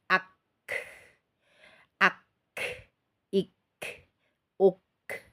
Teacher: Suaranya tertahan kemudian kita alirkan kita lepas itulah udaranya mengalir